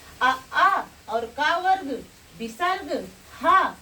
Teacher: जैसे अ आ और क वर्ग विसर्ग ह ये सब का उच्चारण स्थान क्या है? कंठ है।